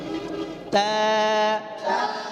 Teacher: ঠোঁটটা যেন না লড়ে যায় নিচের ঠোঁটটাও যেন না লড়ে যায় জিহ্বার আগা উপরে সানাওয়ার ঘোড়ার সঙ্গে যেন লাগে